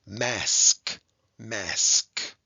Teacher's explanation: s and k are two consonants that go together and they blend together nicely right they sound like they're kind of stuck together